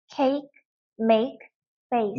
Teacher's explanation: 알파벳 A가 강세가 들어가면 이렇게 이중모음이 나기도 합니다